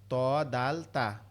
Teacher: ত দাল তা আমাদের উপরের দুই দাঁতের গোড়ার থেকে, জিহ্বার আগাটা উপরের দুই দাঁতের গোড়ায় লাগবে